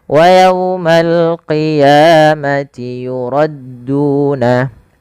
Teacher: Dia adalah huruf qof ya lebih tebal hurufnya dan dia sifatnya sifat istila. Pangkal lidahnya terangkat.